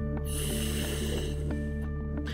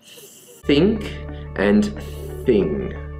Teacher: created by placing the tongue between the tea like so and blowing air out with no voice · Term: voiceless dental fricative